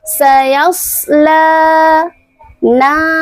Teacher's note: Setelah huruf shad terdapat huruf lam, di atasnya terdapat alif kecil. Maka lamnya di sini adalah mad thobi'i. Dibacanya dua harakat.